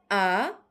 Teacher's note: নিম্ন স্বরধ্বনি উচ্চারণের সময় জীভ নিচে নামে। জীভ উপরে আ জীভ একদম নিচে।